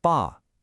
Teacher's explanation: Father gets that sharp falling fourth tone.